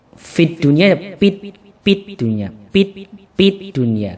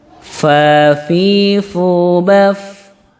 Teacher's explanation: Tapi kalau fa bukan bibir atas menyentuh bibir bawah, tapi ujung gigi seri kita yang atas, gigi kelinci kita itu menempel di bibir bagian bawah tapi yang dalam.